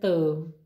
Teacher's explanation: ਮੇਰੀ ਜੀਭ ਜੋ ਹੈ ਦੰਦਾਂ ਨੂੰ ਛੋਈ